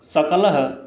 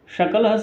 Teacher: देखें इसमें दंत स है सकल में, और इस शकल में तालव्य स है